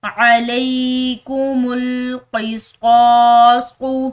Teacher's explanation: صاد یہ پر اور موٹے حروف میں سے ہے، اس کو پر اور موٹا پڑھا جائے گا۔